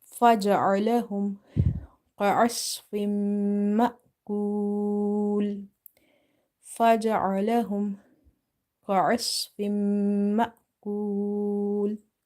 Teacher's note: Then here we have idgham ma'al ghunna, meaning merging as well as nasalization. This Hamza is having sukoon, so we will give it a sudden pause like ma. Waw is madda, so we will apply the rule of madda arid lis sukoon, stretch it up to 3 alif.